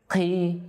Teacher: Maka jangan sampai ada udara yang terhembus ketika diucapkan. Qi, ya. Bisa tertukar dengan kaf, ya. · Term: huruf qaf